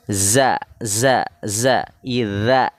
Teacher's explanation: Za seperti Sin ujung lidahnya ke bawah gigi seri